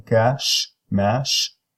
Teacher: it is a voiceless palatal fricative. This sound sometimes is referred to as alveopalatal.